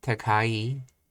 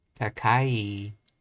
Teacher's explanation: takai is pronounced low, high, low.